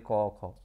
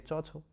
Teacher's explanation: প্রত্যেকটি বর্গের প্রথম ও দ্বিতীয় ধ্বনি হচ্ছে অঘোষ ধ্বনি